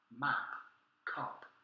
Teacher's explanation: there's no vibration vocal chords but it is aspirated